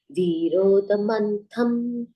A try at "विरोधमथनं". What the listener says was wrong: विरोध मंथन नहीं है, मथनम है। विरोध मथनम।